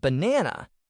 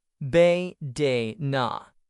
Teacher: in the word banana, the stress is on the second part, be, de, na. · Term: Word stress